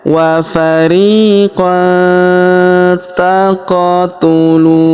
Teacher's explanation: Huruf qof berharakat sukun. Maka kita pantulkan atau kita qalqalahkan